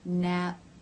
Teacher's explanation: the lips are together cutting off the airf flow nap and they part the air is released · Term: stop consonants